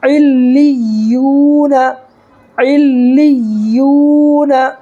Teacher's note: یہاں دیکھیے واو ساکن سے پہلے یا کے اوپر پیش ہے، تو واو ساکن سے پہلے پیش ہو تو واو مدہ ہوگا، اور واو مدہ کو 1 الف کے برابر کھینچ کر کے پڑھیں گے